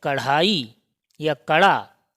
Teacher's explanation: इनके उच्चारण में ताल से टकराती है फिर नीचे गिरती है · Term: उत्क्षिप्त व्यंजन